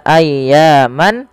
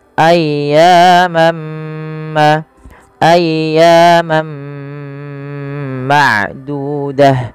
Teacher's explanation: masukkan tanwiinnya kepada huruf mim dan diganti bunyinya · masukkan tanwinnya kepada huruf mim dan diganti bunyinya. Awalnya ayyaman menjadi ayyamam, ayyamam ma'dudah, ya ditahan dan diganti suaranya huruf mim, maka dinamakan dengan idgham.